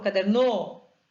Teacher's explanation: então der é a sílaba tônica dessa palavra